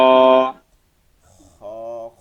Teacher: খ বলার সময় একটু ঘষা দিয়ে বের হইতে হবে